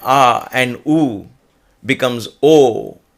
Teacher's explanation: ah and ooh together becomes o a different sound emerges